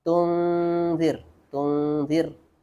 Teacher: Kalau zir, ra-nya dibaca tipis karena sebelumnya kasrah. Sebelumnya kasrah, maka dibaca tipis.